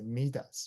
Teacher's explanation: T and U become together, meet us. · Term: linking words